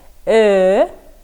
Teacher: Для правильной его артикуляции язык должен находиться как при звуке «э», а губы вытянуты как при звуке «о».